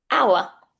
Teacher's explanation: This H then is completely silent. Do not say hour.